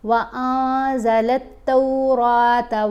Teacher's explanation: مصدقا لما بین یدیہ وانزل التوراۃ، را کو پر پڑھیں گے، نون کے اوپر ہم نے اخفا کیا، نون ساکن کے بعد ہے زا، اس لیے زا حروف اخفا میں ہے۔ اب ہم نے نون کی آواز کو ناک میں چھپا کر پڑھنا ہے